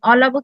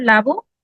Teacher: শব্দের প্রথম স্বরধ্বনি হারিয়ে যায় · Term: আদি স্বর লোপ